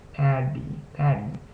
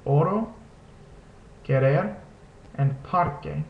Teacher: pronounce just like the double D sound in the English Patty notice how you just kind of tap your tongue against the roof of your mouth